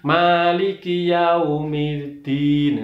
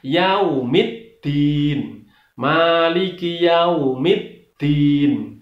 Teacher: Middin, di situ ada tasdid. Sekali lagi, cara membaca tasdid maka harus ditekan.